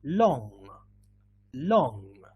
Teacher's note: mouth sorry okay to produce the sound this is the sound it's a nasal sound we need to move our tongue backwards so we do the same but we touch the back part · to move our tongue backwards so we do the same but we touch the back part of the mouth yes with the back part of the tongue